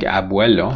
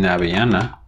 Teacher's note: It's a voiced bilabial fricative. So in a word like abuelo, for example, the b is fricativized into v, abuelo.